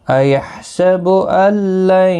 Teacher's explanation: نون ساکن کے بعد یرملون کا لام ہے، ادغام ہوگا، گنہ نہیں ہوگا